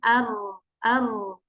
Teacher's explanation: dari celah kecil yang ada di ujung lidah itu sendiri karena ketika mengucapkan huruf ro R itu memang ujung lidahnya itu dengan ee langit-langit tapi dia enggak terlalu ditekan enggak terlalu ditempel